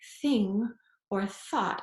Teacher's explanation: thorn was the consonant th as in thing or thought and it's voiceless so your vocal cords are not vibrating when you say it